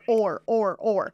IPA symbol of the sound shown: ɔr